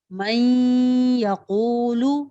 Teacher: जैसे من یقول، یہاں من نون ساکن، نون ساکن کے بعد ینمو میں سے یہاں پہ یا موجود ہے، تو ہم نے نون ساکن کو یا متحرک میں اس طرح ملانا ہوگا کہ یہ مشدد ادا ہو اور ان میں حرکتین مقدار غنہ بھی ہو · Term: ادغام مع الغنہ